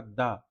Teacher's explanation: द बोलने में हमारे स्वर तंत्री में कंपन होता है। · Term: सघोष